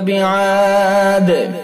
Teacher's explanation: بعاد وقف کریں گے تو دال کے اندر قلقلہ کیا جائے گا